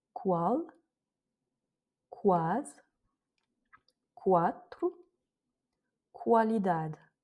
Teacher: on prononce bien le U qui est au milieu comme un OU.